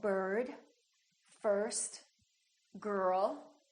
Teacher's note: this sound is produced with the uh sound the very short uh neutral sound plus the r